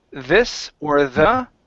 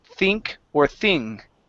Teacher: we could have a word with the th at the beginning and the th is voiced like this or the or we can have a th at the beginning and it's unvoiced like think or thing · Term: voiced th